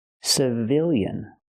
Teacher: The stress is on the second syllable, so we use the short I sound